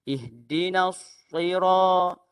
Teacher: Itu sahaja beza huruf sin dan juga huruf sad. Tetapi apabila dia membuat terlalu tebal huruf sad, maka menghilangkan sifat desiran